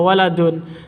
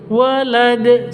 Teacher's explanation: Karena berhenti waqaf, maka waladun ini dalnya mati sukun ya. Makanya kalau berhenti mati sukun.